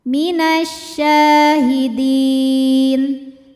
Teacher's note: Mad Thobi'i dahiri mad thi'i muqaddar Ya maaf Mad thi'i muqaddar sebab syin berharakat fathah panjang maka syin panjang dua harakat